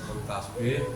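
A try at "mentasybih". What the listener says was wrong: Mentasbih. Tasbih ya pakai syin.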